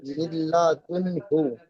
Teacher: মিমের নিচে জের আছে, যেটা হলো হারাকাত, হারাকাতের পড়াকে তাড়াতাড়ি পড়তে হয়, টান দেওয়া নিষেধ। নুন সাকিনের পরে ইদগাম ইয়া মালুনের 6টি অক্ষরের মধ্যে থেকে লাম এসেছে, তাই ইদগাম নুন সাকিনের আওয়াজকে মিলিয়ে বিনা গুণায়